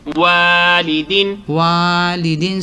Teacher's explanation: merong stress sound sa tinatawag na wa dahil nga sa alif sukun. waw fatha alif sukun, wa lam kasrali, wali, dal kasratain din, Walidin.